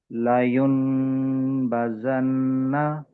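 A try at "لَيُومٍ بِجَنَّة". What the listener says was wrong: నూన్ శబ్దం వినపడుతుంది. యా మీద ఉన్న దమ్మా తీసుకుని వెళ్ళి నూన్ పైన కనపడుతున్న చిన్న మీమ్కు కలపండి, నూన్ లేదు అనుకుంటూ.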